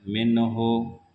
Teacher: منہ لتنذر، نون ساکن کے بعد جہاں پر حروف حلقی میں سے کوئی حرف آ جائے گا وہاں پر نون کا اظہار ہوگا، نون کو صاف صاف پڑھا جائے گا